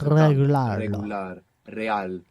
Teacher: in most Spanish dialects it's a rolling R